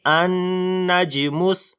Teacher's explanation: نون کے اوپر شد غنہ کریں گے اور 1 سے 2 سیکنڈ لمبا کریں گے · جیم کے اوپر قلقلہ کریں گے، حروف قلقلہ ہے اور جزم بھی آ گئی ہے، کمزور قلقلہ ہوگا